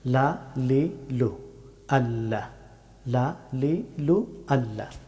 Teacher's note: লাম হরফটি উচ্চারিত হয় জিহ্বার সামনের অংশের কিনারা এবং উপরের তালুর শক্ত অংশ ছুঁয়ে